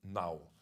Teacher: the first N is with your tongue outside, so a kind of interdental Nau